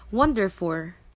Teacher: The end sound l in the word wonderful was replaced by the sound r. The learner pronounced it as wonderful.